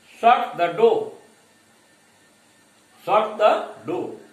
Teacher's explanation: बट so far as falling intonation is concerned, when we order, when we command someone, the intonation goes from high to low